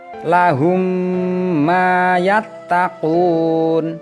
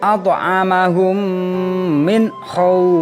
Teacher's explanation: memasukkan suara mim sukun ke dalam huruf mim berharokat berikutnya dan dibaca punah atau dengung secara sempurna atau dikeluarkan dari pangkal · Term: Idgham Mimi, idgham mimi